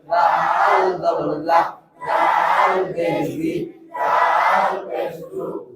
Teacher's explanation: লাল জিব্বার আগা থেকে নরম ভাবে আদায় হবে